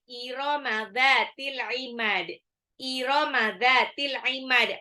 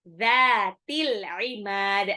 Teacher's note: Zalnya ujung lidah seperti mau digigit ya, bukan za, bukan z.